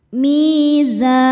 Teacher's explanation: Cara bacanya lam sukun dibaca idhar atau jelas. Wa wada'al mi hukumnya mad tabi'i dhahiri sebab ya sukun sebelumnya kasrah. Cara bacanya dipanjangkan 2 harokat.